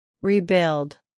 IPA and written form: riˈbɪld (rebuild)